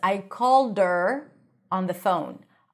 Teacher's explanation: when we say her, that's when we drop the H.